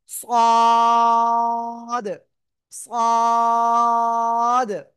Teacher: একটু মোটা আওয়াজে উচ্চারণ করব চার আলিফটা নিয়া সবাই খেয়াল করবেন সদ সদ চার আলিফটান সদ ঠিক আছে অনেকে আবার এরকম উচ্চারণ করে সদ সদ না সদ চারলেট টান হবে।